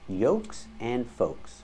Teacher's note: with both words we do not pronounce the L the L is silent in both words